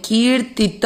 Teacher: की को खींचा है, ती को नहीं